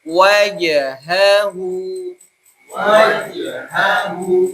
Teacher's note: jimnya jim pertahankan untuk tidak keluar nafas